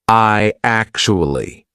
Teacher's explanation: So, when you've got I actually, how are we going to link that? What we're going to put in the middle is we're going to put a Y sound. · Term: vowel-to-vowel link